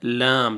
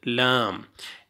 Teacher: ये ऊपर वाले दांतों की जड़ से देखें अदा हो रहा है लाम, लेफ्ट साइड से लाम।